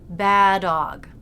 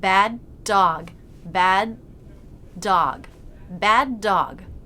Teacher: It's not 'baadog', but bad dog, with a stop.